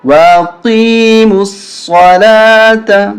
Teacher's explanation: قاف موٹا ہوگا صاد موٹا ہوگا